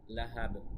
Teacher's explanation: এখানেও কলকলা হবে, যেহেতু আমরা থামার জন্য বাকি সাকিন করে দিচ্ছি